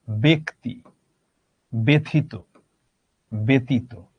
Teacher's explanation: শব্দের প্রথমে অকারান্ত বর্ণে যদি জফলা থাকে, তারপরে হ্রস্বই দীর্ঘই যদি থাকে, তাহলে জফলার উচ্চারণটা একারান্ত হয়।